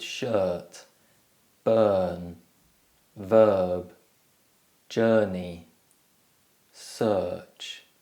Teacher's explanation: the sound is produced with the tongue in the center of the mouth and the lips relaxed. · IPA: /ɜ:/